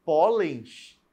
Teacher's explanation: ela tem a sílaba tônica como a penúltima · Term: paroxítona